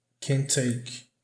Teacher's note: Ele não pronuncia o T aqui de can't. Na verdade é como se essas palavras se juntassem, né? Como se os T's aqui se fundissem